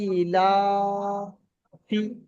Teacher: হামজা খারাজের ই, লাম খারাজে বললা, আলিফ মাদ্দা সমতুল্য একালিফ টান দিয়ে পড়তে হয় · ইয়া মাদ্দা সমতুল্য একালিফ টান দিয়ে পড়তে হয়